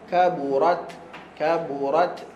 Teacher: huruf ta ataupun Sin jangan tambah huruf baru hanya lepaskan angin huruf ta makhraj dia hujung lidah belakang gigi atas Masih pada makhraj huruf ta lepaskan angin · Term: hams